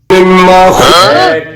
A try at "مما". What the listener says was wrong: মিম্মা, মা এটা টানছস কেন? মিম্মা মিম্মা, না টানতে বলছি যে, না টানতে বলছি যে মা।